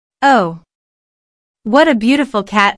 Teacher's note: What a is an expression that means, I think this is a very, what a plus, noun, is followed by an adjective, which is usually emphasized. Notice the emphasis on beautiful here.